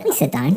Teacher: my intonation is going up. It sounds completely different, but the words are exactly the same.